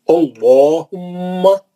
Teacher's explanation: تو اللہ کو تو جیسا پڑھنا ہے جو قاعدہ ہے ویسی پڑھیں گے، وہ ہما اس کے ساتھ ملا ہوا ہے تو آپ کنفیوز نہیں ہونا، ہے نا. اللہم میں الف پہ زبر ہے تو یہ لام جلالہ موٹا پڑھیں گے